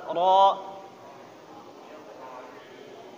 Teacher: Ro-nya coba dipertebal sedikit, lebih ditebal.